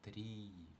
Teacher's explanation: Тобто читаємо не просто і, а отак і подовжено. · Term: довге і